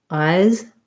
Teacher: Eyes, I have a weak S or a Z and a long vowel. So please get me some ice.